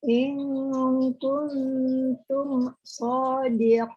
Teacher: yang kuntumnya hati-hati tidak samar ke huruf N ya. Langsung kung ke bunyi ang.